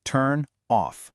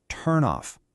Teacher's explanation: That N sound at the end of turn, a consonant, gets pulled over to connect with the O sound at the beginning of off, a vowel. And boom, just like that, it becomes turn off.